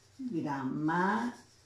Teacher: ¿Cuál es la sílaba en gramática que lleva la mayor intensidad? Grama, ¿no? Si yo cuento de atrás hacia adelante, perdón, esta sería la última, la penúltima, la antepenúltima sílaba. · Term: esdrújula